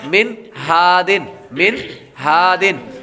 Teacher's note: اسی طرح من ہادن، من ہادن، نون ساکن کے بعد میم نون زیر من، ہا الف زبر ہا۔ نون ساکن کے بعد ہا حروف حلقی میں سے آ رہا ہے تو غنہ نہیں کریں گے۔